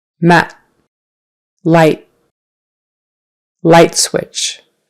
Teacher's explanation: The next couple will have a final T sound, where not much air comes out, but you still put your tongue up behind your teeth.